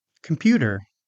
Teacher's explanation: This word has second syllable stress.